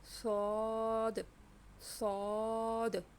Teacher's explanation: سعد کو ہمیں تھوڑا سا موٹا پڑھنا ہے